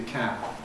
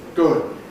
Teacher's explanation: Doesn’t have to be [kæb] (released); it can just be [kæb̚] (unreleased). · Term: final voiced plosives